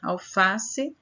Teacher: Alface, a sílaba tônica no Fá, e a sua classificação paroxítona, que está na penúltima sílaba, a sílaba tônica.